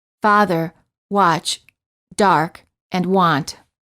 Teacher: the lips are apart as if you're yawning the lips are not rounded the tongue is relaxed and flat at the bottom of the mouth